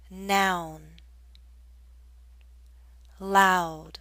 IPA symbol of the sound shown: aʊ